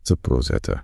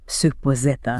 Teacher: You do not hear a hard, distinct D followed by a harsh, aspirated T. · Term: connected speech